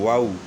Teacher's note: دونوں ہونٹ جو ہے نا گول کرنے ہیں، دانت اس میں جو ہے نا استعمال نہیں ہوں گے